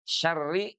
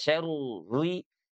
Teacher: Syarri di sini walaupun ada tasydid tapi lihat dia bertanda kasrah sehingga dia dibacanya tipis saja terakik ya